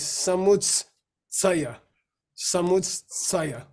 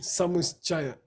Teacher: there's no cha in Sanskrit. It's tsa